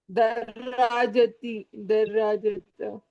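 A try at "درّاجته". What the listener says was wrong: आपने हा छोड़ दिया, दर्राजतहू, दर्राजतहू।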